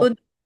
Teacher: اش پہ کوشش کیجئے کہ شین پہ قلقلہ نہ ہو